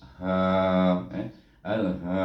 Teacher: Al itu lidah kita naik ke atas, ingat makhraj lam. Kemudian ha di sini bertemu dengan alif, iaitu dengan huruf mad. Kita baca dengan mad asli, iaitu dengan dua harakah